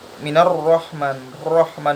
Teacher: Nah, ro-nya di sini berharokat fathah, yang mana berarti ro-nya di sini adalah ro tafkhim, bacanya tebal.